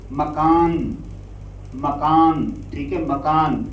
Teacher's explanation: مکان کہنے سے وہ آواز نون ظاہر نہیں ہوا، نون چھپا رہ گیا